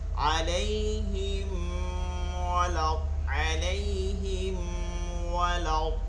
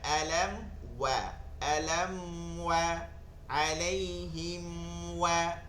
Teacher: ওয়াওটা হয় 2টা ঠোঁট গোল করে